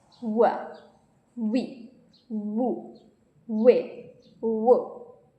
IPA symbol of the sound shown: w